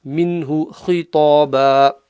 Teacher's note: خا, top of the throat.